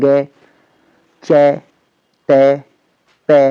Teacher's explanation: अब कैसे करना बोल के देख लो, गे, चे, ते, पे, तो पे, जैसे ही पे आया, पे आते ही क्या खुले आपके होठ, दोनों होठों का यूज हुआ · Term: ओष्ठ